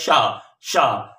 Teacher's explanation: शा का मतलब है जीभ तालू से छूती है, ठीक है ना, तो संघर्ष करती हुई दिखती है